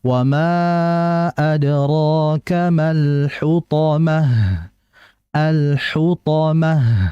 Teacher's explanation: huruf H ini maka dialirkan dengan desisan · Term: alkhafa